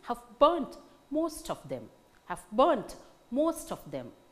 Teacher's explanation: we find cases where syllables in two neighboring words seem to be equally strongly stressed